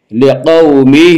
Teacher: لقومہ، واولین وہ واو جو ساکن ہو اس سے پہلے زبر ہو، واولین کو نرم آواز کے ساتھ جلدی پڑھیں گے